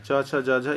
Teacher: को तालव्य व्यंजन कहते हैं तालू से किसका उच्चारण होता है च का च वर्ग का उच्चारण तालू होता है